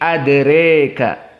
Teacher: Maka di sini sepakat qiraah Abu Amr dari Ad-Duri dan As-Susi dibaca dalam keadaan al-imalah al-kubra karena masuk kepada kaidah alif yang datang setelah ra.